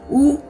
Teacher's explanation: उ ओष्ठ्य ओष्ठ्य याचा अर्थ ओठातून